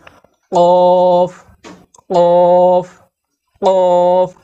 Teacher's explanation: কফ অক্ষর জিহ্বার গোড়া থেকে কাকের আওয়াজের মতো মোটা করে পড়তে হয়।